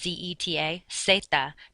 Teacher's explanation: the letter Z does not make a buzzing sound like it does in English. You just pronounce it like an S.